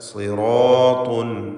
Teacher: സിറാത്തുൻ സ്വാദിന് കുറഞ്ഞ തഫ്ഖീം, കസ്റാണ്. റാഇനും അലിഫിനും പൂർണ്ണമായ തഫ്ഖീം.